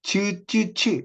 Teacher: 경구개와 혀의 앞부분을 닿게 해서 기류의 흐름을 막았다가 파열과 마찰, 이 동시에 일어나는 거, 이게 파찰음입니다.